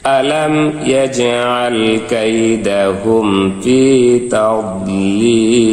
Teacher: এখানে ওয়াকফ করলে, এখানেও মাদের হরফ যেহেতু ওয়াকফ, বামের হরফে ওয়াকফ হয়েছে, তাই এই একালিফ মাদকে 3 আলিফ টানিয়া মাদ্দে আরজি বলা হয়। একে মাদ্দে আরজি করে 3 আলিফ টানিয়া ওয়াকফ করিতে হইবে।